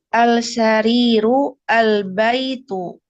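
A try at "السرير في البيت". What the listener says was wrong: Baik, naqra as-sarir wala naqra al-sarir.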